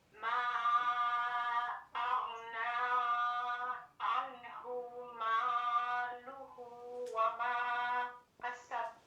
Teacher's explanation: Attention, mon ma là, il est allongé en 4 secondes ici